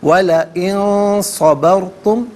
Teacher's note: نون ساکن ہے، اس کے بعد صاد حرف اخفا ہے، تو نون ساکن کو اخفا کے ساتھ پڑھیں گے، ناک میں آواز لے جا کر گنگنانا